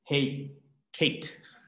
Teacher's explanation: that first vowel, the hirik, lengthens to become a sere